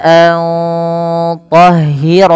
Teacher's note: ini suara nunnya perlu disamarkan kepada huruf tho